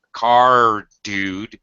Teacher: Then we go from an R to the D, but they're both voiced.